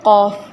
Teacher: قاف کا جو مخرج ہے وہ اقصی لسان بالمقابل اوپر کا تالو ہے، کہ زبان کی جڑ آپ اوپر تالو سے لگائیں تو وہ قاف ہیوی ہو جاتا ہے۔